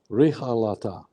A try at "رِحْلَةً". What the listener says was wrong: On the ha, do you have a fatha or you have a sukun? Rih.